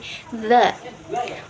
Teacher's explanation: ujung lidah dengan ujung gigi seri atas